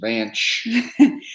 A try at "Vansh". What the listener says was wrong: It's not a ch, like it's V-A-N-S-H, not V-A-N-C-H. That's like ch. C-H is ch. If it's S-H, it's just Van. If you want to talk about somebody shh, you say S-H. So it's Van shh.